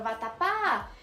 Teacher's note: eu vejo que ela é uma palavra oxítona. A sílaba tônica é o pá.